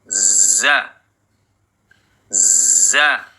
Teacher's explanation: makhraj huruf z ujung lidah bertemu gigi seri bawah bagian dalam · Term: huruf Za